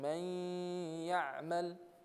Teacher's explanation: So the noon merges into the ya.